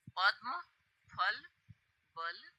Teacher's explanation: स्वर हैं इसमें उ, व्यंजन प, फ, ब, भ, म, अर्थात पूरा पवर्ग हमारा होठ से बोला जाता है। दोनों होठ मिलते हैं जैसे प और म बोलने में। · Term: ओष्ठ वर्ण